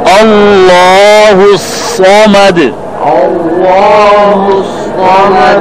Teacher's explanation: یہاں عام لوگ غلطی کرتے ہیں کہ صاد کے بجائے سین پڑھتے ہیں جس کا بہت خطرناک معنی غلط ہو جاتا ہے. آپ نے صاد کو موٹا پڑھنا ہے زبان کے درمیان سے لیکن ہون گول نہیں کرنے